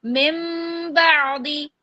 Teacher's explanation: نون ساکن کی آواز کو میم سے بدل کر پڑھیں گے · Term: اقلاب